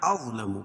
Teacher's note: اظلم ضاد کو پور پڑھیں گے، کیوں؟ حروف مستعلیہ میں سے. میم مشدد ہے، غنہ ہوگا.